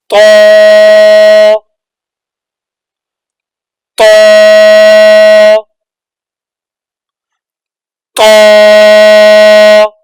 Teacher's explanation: طاء کو ہم نے موٹے حروف میں بھی پڑھا تھا اور سختی والے حروف میں بھی پڑھا تھا، اس لیے اس کو موٹا بھی کرنا ہے اور سختی بھی کرنی ہے۔